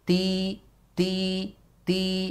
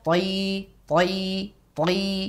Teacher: antara huruf ta Dal ini mempunyai sifat tipis huruf tho mempunyai sifat yang tebal